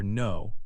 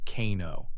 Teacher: One common silent letter pattern is the letter K before N. When a word starts with KN, the K is silent. You only pronounce the N sound. For example, in the word no, you hear no, not kano. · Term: silent letters